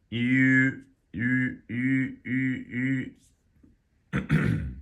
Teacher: you start out with an e and you go to an u and you combine them